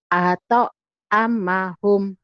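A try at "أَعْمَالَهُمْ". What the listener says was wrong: Jangan atau jangan apa, apa. Jangan ato, kalau ato berarti ada barisnya ya. Jangan di ato. Kalau ato berarti tonya ada baris ya. kalau ada barisnya nih dibacanya ato.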